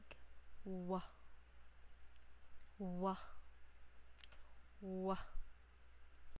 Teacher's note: ang letrang W ay velar at malapatinig